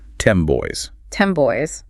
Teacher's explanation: In casual, fast speech, that N sound at the end of 10, which is made with the tongue behind the teeth, it often shifts to sound more like an M.